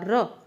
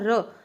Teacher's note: ਕੰਬਵਾ व्यंजन ਪੰਜਾਬੀ ਦੇ ਵਿੱਚ ਰਾਰਾ ਕੰਬਵਾ ਧੁਨੀ ਹੈ, ਤੇ ਜਿਨ੍ਹਾਂ ਦੇ ਉਚਾਰਨ ਵੇਲੇ ਜੀਭ ਦੇ ਵਿੱਚ ਕੰਬਾ ਪੈਦਾ ਹੁੰਦਾ ਰ। ਜਦੋਂ ਤੁਸੀਂ ਰਾਰਾ ਬੋਲਦੇ ਹੋ ਨਾ ਰ, ਤਾਂ ਤੁਹਾਡੀ ਜੀਭ ਆ ਜਿਹੜੀ ਕਿ ਉਹ ਕੰਬਦੀ ਹੈ, ਠੀਕ ਹੈ, ਜੀਭ ਬਾਰ-ਬਾਰ ਬੁੱਟਾਂ ਨੂੰ ਛੂੰਹਦੀ ਹੈ ਰ, ਤਾਂ ਉੱਥੇ ਹੋਊਗਾ ਕੰਬਵਾ।